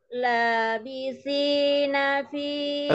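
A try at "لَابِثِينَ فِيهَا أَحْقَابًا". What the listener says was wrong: Terlalu tinggi. Terlalu tinggi. Labithi. Agak setengah.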